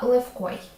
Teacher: Щодо слова левкой, якщо ти його вимовиш, тобі може здатися, що в якимось чином схоже на ф, але це хибна думка. В українській мові сонорні вимовляються чітко і тим більше перед глухим оглушення не відбувається. Тому ф і в - це зовсім різні звуки.